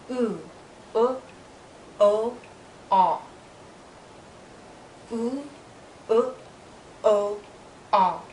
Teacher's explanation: When I move to these vowels, the back part of my tongue is higher.